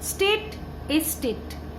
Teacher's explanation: শব্দের প্রথমে যুক্ত ব্যঞ্জন থাকায় উচ্চারণের সুবিধার জন্য শব্দের আদিতে স্বরধ্বনির আগম হয়, একে বলা হয় আদি স্বরাগম।